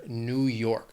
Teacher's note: 2 syllables, stress is on that second syllable, that second word, New York.